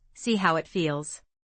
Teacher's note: And see how it feels has a dropping H in how, so it sounds like see how it feels but faster, see how it feels.